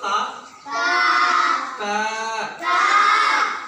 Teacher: জিভের আগাটা উপরে যে দুটো দাঁত আছে ওর গোড়ায় ঠেকাবে, আগায় কিন্তু নয়, দাঁতের গোড়ায়।